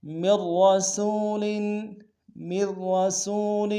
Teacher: وما ارسلنا من رسول، من رسول، میم کو ملائیں گے، مید، پہلا را باریک ہوگا، دوسرا را کے اوپر تشدید زور دیں گے اور موٹا ادا کریں گے، سین کو واو کے سامنے لائیں گے، واو لین بغیر کھینچے پڑیں گے۔